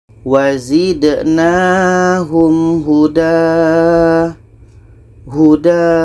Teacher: Ini sesuai dengan hukum Mad Iwad . Jadi, kita panjangkan sebanyak dua harakat. Agar mudah dipahami, kita hilangkan satu baris tanwin dan ganti dengan alif.